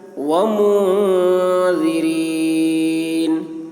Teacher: نون میں اخفا ہو رہا ہے، ذال کی آواز باریک ہوگی